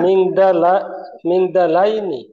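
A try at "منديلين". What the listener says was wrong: মিন দা কেন? মিন দি, মিন দি লাইন, মিন দি লাইন।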